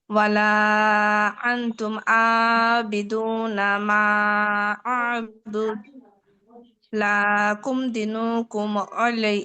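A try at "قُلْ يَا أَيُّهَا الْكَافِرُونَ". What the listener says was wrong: আপু লায়ে টান নাই লায়ে টান নাই লাকুম দিনুকুম ওয়ালিয়া দিন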